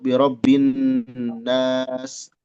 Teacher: bin itu gunnah ditahan 2 harokat. Nas itu mad, jangan masuk hidung suaranya.